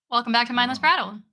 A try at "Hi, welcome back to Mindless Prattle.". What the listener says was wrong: It sounded like your announcement voice.